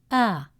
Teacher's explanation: Alif stretches the fatha a sound to a long a sound with mouth wide open.